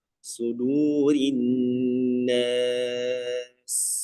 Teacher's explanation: sin itu memiliki sifat apa? Shafir. Ya, dia lebih tajam.